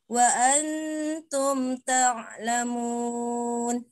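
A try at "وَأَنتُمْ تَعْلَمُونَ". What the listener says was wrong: Sedikit lagi ditipiskan. Wa antum ta'lamun. Wa antum. Jangan wa antum. Tum itu keras sekali bunyinya ya. Itu huruf to maunya itu. Dia kan huruf ta. Lebih tipisnya, lebih ringan.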